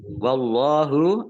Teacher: Allahnya dibaca tebal karena harokat di depannya fathah. Lam fathah berdiri, mat tabi'i.